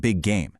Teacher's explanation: And gemination is twinning sounds, where a word ending in a consonant meets a word starting with that exact same consonant, like big game. You just hold the G a little longer instead of saying it twice.